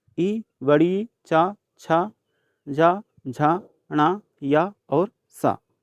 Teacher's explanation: तालु से उच्चारित होते हैं